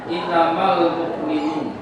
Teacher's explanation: Jadi setiap yang ada nun bertasydid, kemudian ada mim bertasydid, itu disebut dengan wajibul gunnah. Bacaannya dipanjangkan satu alif dengungannya. Jadi dengungnya itu dipanjangkan minimal satu alif. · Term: wajibul guna